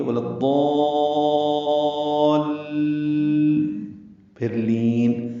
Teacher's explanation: مد لازم کلمی مثقل ہے، ہم اسے 6 حرکات لمبا کرتے ہیں، اس میں طول ہے.